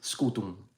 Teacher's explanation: it's written with an M but the m is not fully pronounced it's only nasalized like they do in Portuguese